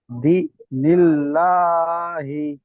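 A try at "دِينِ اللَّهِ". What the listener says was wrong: দি, ইয়া মাদ্দা, দি, দাল ইয়াজের দি, ইয়া সাকিনের ডান দিকে জের আছে, এটি ইয়া মাদ্দা, এক আলিফ টান হবে। দীনিল্লাহি, দীনিল্লাহি।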